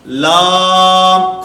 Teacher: لام کی ادائیگی میں آواز ناک میں نہ جائے